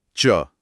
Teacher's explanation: फिर च वर्ग के लिए जीभ थोड़ा आगे आकर तालू को छूती है।